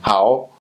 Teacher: So in Laos, tones change, whereas in Thai, the word we, rao, is more of a flat tone. In Laos, it's more of a rising tone